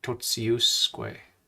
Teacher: A T before an I is a TS sound.